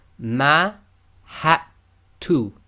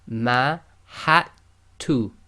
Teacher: The dal is sakin, so in this case we're going to totally ignore the dal, and we've done it in grey.